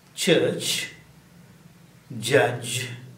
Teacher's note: the air is stopped and released with definite friction of the sh and the kind these sounds are actually a · are made with the tongue brief defly touching the alveol rich think of CH and J as being T followed by sh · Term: stop consonants of a special kind, CH and J sounds